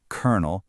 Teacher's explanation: that first L just disappears. The O sound turns into an sound.